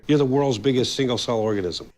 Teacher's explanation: The intonation remains pretty steady and quite flat with a slight pitch fall at the end of organism. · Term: flat intonation